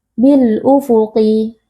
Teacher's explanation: cara membacanya alif lam di sini kita baca dengan sukun yang jelas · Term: alif lam alqamariah